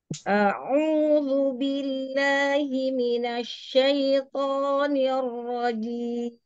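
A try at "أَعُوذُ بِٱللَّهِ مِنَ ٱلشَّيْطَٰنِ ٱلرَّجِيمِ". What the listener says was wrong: A'udzubillah, jangan himinosh ya. Sempurnakan fathanya, himinash syaito.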